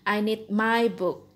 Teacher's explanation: Nah, kata my book adalah kata yang penting. Jadi, Anda harus naik di my sedikit, kemudian turun sampai book. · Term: falling intonation